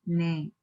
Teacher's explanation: when you're saying ne, you say a falling accent, that is ne. It is going down.